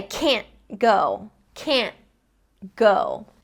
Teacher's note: the tip of my tongue goes up to the roof of my mouth in the front, but instead of releasing it, I just transition immediately into the next sound, which in this sentence is going to be go, so it's g.